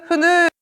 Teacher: 공기가 지나가는 통로를 좁히되 완전히 막진 않은 채 그 틈 사이로 공기를 내보내 마찰을 일으키면서 내는 소리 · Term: 마찰음